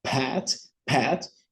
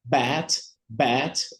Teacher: a gente vai sentir uma vibração em b